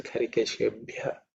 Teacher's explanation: the fourth letter in the Pa Varga and has to be aspirated